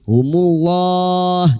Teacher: Lam jalalah yang didahului dumad dibaca tafkhim